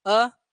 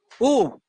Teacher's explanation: जैसे ही ऊ बोलोगे, ऊ, जो होठ की आकृति गोल हो रही।